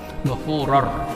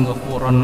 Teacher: Nah, saat adanya idgham bila guna, itu artinya idgham artinya belaburkan. N-nya hilang, tetapi dimasukkan ke huruf ro.